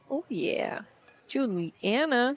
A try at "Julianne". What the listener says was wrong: I think it's Julianne. There's no A at the end.